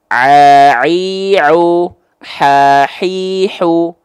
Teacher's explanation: Ain dan ha kecil dari bagian tengah tenggorokan · ain dan ha kecil dilafalkan dari tempat yang sama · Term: wastul halqi